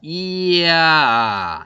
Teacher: 이 반모음 J하고 아가 결합이 되는 거야. 이야 이렇게 되는 거죠.